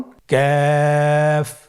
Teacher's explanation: কাফ উচ্চারণের ক্ষেত্রে অবশ্যই পাতলা করে উচ্চারণ করতে হবে এবং তিন আলিফ টেনে পড়তে হবে।